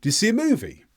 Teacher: Notice that my voice generally went up through the statement. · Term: up intonation